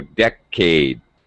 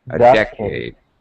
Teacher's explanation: Second syllable stress, so decade.